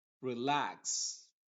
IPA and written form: rɪˈlæks (Relax)